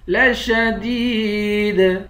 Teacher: لشدید، دال کو یا کے ساتھ ملا کر یا کو ایک الف کی مقدار کھینچ کر پڑھیں گے. آخر میں حروف قلقلہ ہے، یہاں پر قلقلہ کریں گے